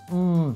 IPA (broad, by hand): m